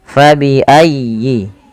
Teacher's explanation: tekan di lafal ya-nya karena dia ada tasydid